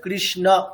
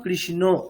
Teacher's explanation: অ আছে মানে অ উচ্চারণই করতে হবে। ও বললে হবে না।